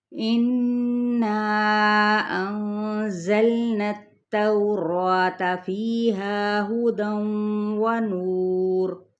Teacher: تا باریک بھی حرف ہے، ٹھیک ہے، یہ موٹا نہیں ہے، یعنی تا کیا ہے؟ ترقیق کے ساتھ پڑھیں گے۔